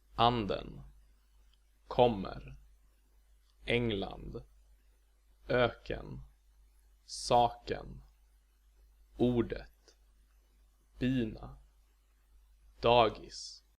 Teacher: Accent 1 is the normal accent, so to speak. In words with this accent, the pitch on the stressed syllable goes up and then down again in the unstressed syllable that follows.